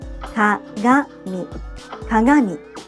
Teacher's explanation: When you have a g sound such as ga or gi in the middle of a word or at the end of a word, it's sometimes pronounced with this nasal sound. This sound is becoming less common, however, especially among young people.